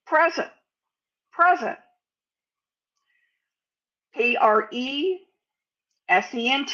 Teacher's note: We don't say the T at all.